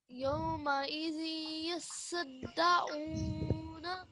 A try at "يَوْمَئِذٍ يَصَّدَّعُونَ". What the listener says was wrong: Okay, so put a little bit more emphasis on these three because they're all mushaddad letters.